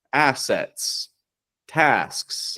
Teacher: that soft airy S, if it's around sounds that are also voiceless, like T or C, those are going to keep the S like a regular S